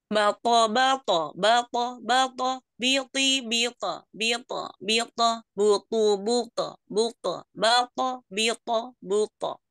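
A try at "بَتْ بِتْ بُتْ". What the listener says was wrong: Sekali lagi, jangan ada bunyinya ke e, bate. Ke o aja. Sempurnakan bunyi o-nya ya.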